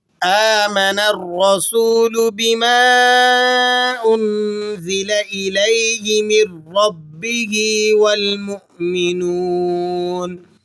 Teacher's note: حمزہ پر کھڑا زبر ہے، 1 الف تک آپ نے اس کو کھینچ لینا ہے۔ · را پر زبر ہے اس لیے آپ نے پر پڑھنا ہے۔